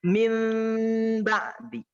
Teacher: Maksudnya adalah membalikkan atau merubah huruf nun kepada mim. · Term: iqlab